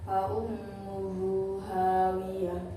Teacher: ada mad silah tidak bertemu hamzah, maka cara bacanya panjang. Panjangnya 1 alif atau 2 harakat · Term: mad silah qasirah